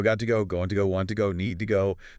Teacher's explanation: The stress isn't on the to, it's on the go or want or whatever comes next. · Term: weak to